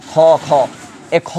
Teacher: মহাপ্রাণ মানে আমরা যখন খ বলি আমরা বাতাসটা বেশি হয়